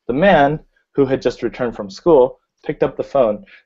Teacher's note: Notice that you say the man who had just returned from school, the who had just returned from school is going to be in a lower tone than the man